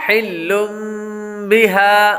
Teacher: پہلے لفظ کے اندر لام پر تنوین ہے، تنوین کے بعد با حروف اقلاب میں سے آ رہا ہے اس لیے غنہ کر کے پڑھیں گے. ہا پر کھڑا زبر ہے اس لیے اس کو ایک الف یعنی 2 حرکات کے برابر لمبا کریں گے کیونکہ کھڑی حرکات حروف مدہ کے قائم مقام ہے.